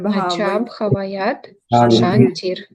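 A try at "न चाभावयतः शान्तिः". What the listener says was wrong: Look, what you are telling? Nacha. If you are telling nacha, then you have to put abhavayatah. And it is speaking like this, then you miss this chanda de culture. You may miss the melody of this stanza.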